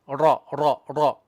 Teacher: Ra, tongue. The tongue has to beat once and twice, up and down. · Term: tikrar